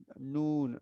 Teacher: নুন হচ্ছে 9 নম্বর মাখরাজ জিহ্বার আগা তার বরাবর উপরে তালুতে তো নুনের জিহ্বার আগাটা লাগবে নুন জিহ্বার আগাটা নুন